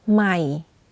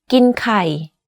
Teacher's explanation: in order to say this tone correctly you need to lower the normal pitch of your voice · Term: low tone